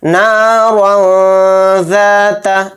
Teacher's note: ذال حروف اخفا کے حروف میں سے ہے، اس لیے را دو زبر رن میں اخفا کریں گے